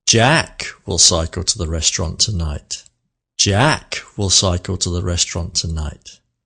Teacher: The meaningful word, the slow word, with a little pause after it, with a bit of melody, was number 1, sentence number 1, Jack.